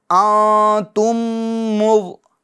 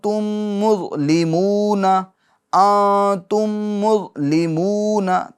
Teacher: نون ساکن کے بعد حروف اخفا میں سے تا آ رہا ہے، لہٰذا نون ساکن میں کیا ہوگا؟ اخفا ہوگا، یعنی گنہ کریں گے۔